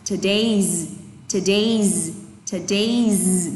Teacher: Từ này là today's, trọng âm thứ hai các bạn ạ.